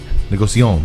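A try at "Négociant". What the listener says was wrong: Don't pronounce the N.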